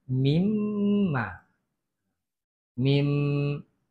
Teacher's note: Bunyi nun ke dalam huruf mim. Dia tak bunyi minma. Dia akan jadi mimma. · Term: idgham ma'al gunnah